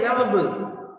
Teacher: When I say lovable, the upper teeth, dear friends, touches the lower lip.